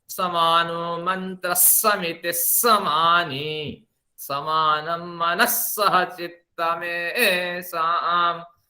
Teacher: अब एक बार फिर इस पे हम ध्यान देते हैं। यहाँ जहां विसर्ग है, आगे सकार अगर है, कोई सा भी सा हो तो आधा स में परिवर्तित हो जाता है पढ़ते वक्त।